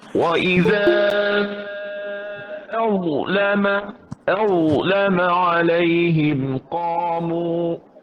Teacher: Huruf dha jangan qalqalahkan dia. Baik, Dibunyikan huruf dha jangan qalqalah.